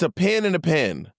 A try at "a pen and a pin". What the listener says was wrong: No, now you're saying pen. Now you said the same thing. You're saying the same thing now. A pen, like it's big I, and eh. That's a eh.